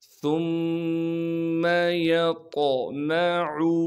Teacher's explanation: میم کو بغیر کھینچے پڑھنا ہے، عین کو صاف کر کے گلے سے نکالیں گے